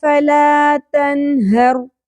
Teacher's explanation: اظہار ہوگا، اخفا نہیں کرنا، اظہار کرنا ہے، نون کی آواز کو کلیئر کر کے پڑھنا ہے